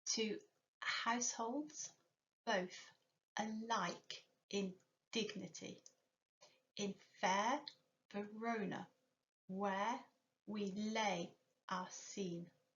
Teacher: in each line, it is the 2nd, 4th, 6th, 8th and 10th syllables that are stressed. This is what iambic means.